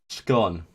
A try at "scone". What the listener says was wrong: No, when it sounded like you said gone. wasn't any S. can't hear the S. No, it must be the capture because it's cutting off the S. Yeah, you're just saying gone.